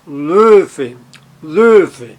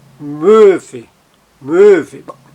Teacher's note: você faz a embocadura para pronunciar um O, embocadura de um O, mas tenta pronunciar um E, então fica E.